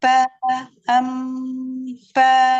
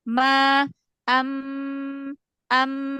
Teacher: dalam Ma am am e ringan jangan ditempelin terlalu kuat kalau kalau BA agak kuat kalau mim asal nempel aja jadi dia tipis